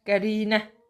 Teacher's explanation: Qərinə i uzandı və mənim qapalı saitimdir